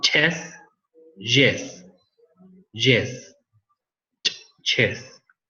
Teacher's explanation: Okay, yes, we missed these ones also, the postalveolar. The affricates, a combination of T and sh.